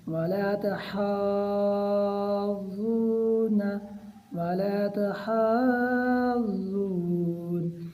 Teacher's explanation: اچھا یاد رہے یہ مد متصل ہے، اس کی مقدار 4 الف کے برابر ہے، اور کھڑی زبر ہے اس کی مقدار 1 الف کے برابر، یعنی ہم ہا کو 5 الف کے برابر لمبا کر کے پڑھیں گے